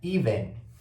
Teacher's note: Esse ezinho, esse segundo e, a gente vai chamar esse som de schwa, ok? O som de schwa, ele acontece muito no inglês, então você já tem que começar a prestar atenção quando ele aparece.